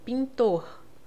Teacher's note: Esse N, ele vai nasalizar o I. É como se eu escrevesse com um tio em cima do I, ó, pintor, tá?